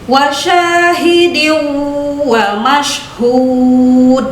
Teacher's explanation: Itu huruf ha. H itu kan keluar dari makhraj alhalqi. Jadi tenggorokan.